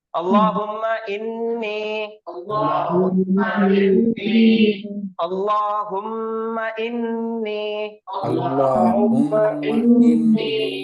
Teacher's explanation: پھر یا کے ساتھ، یا ساکن سے پہلے کیا آیا؟ زیر آیا، تو یا مدہ کا فائدہ ہوگا، اس کو کھینچ کے پڑھیں گے · اس کے بعد ہے انی، حمزہ کے نیچے زیر، اس کے بعد پھر نون مشدد. نون مشدد آیا تو غنہ کر کے پڑھیں گے